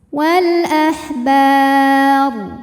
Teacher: Warrabbaniyuna wal, kemudian ada alif lam qamariyah, karena alif lam menghadapi huruf qamariyah yaitu hamzah, maka lam dibaca jelas. Wal ahbar, kemudian ketika berhenti hukumnya adalah mad arid li sukun, karena mad tabi'i bertemu dengan huruf yang disukunkan karena waqaf.